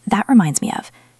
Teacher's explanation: Notice how the T in that can stop abruptly, and reminds flows into me and of.